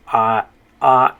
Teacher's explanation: in spanish it's gonna be an ah mixed with an e sound because you have the i right next to it ah and then e and then the e on the end